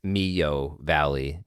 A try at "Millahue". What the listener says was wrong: Oh, you were way off. You weren't even close. You missed the whole syllable.